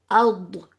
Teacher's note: الف کو ہم باریک رکھ لیں لیکن ضاد کو موٹا کر رہے ہیں، اور کیونکہ الف کو ضاد سے ملانا پڑ رہا ہے تو اسی لیے آئی تھنک آپ کا الف موٹا ہو جا رہا ہے، لیکن کوشش کریں کہ باریک ہی رہے.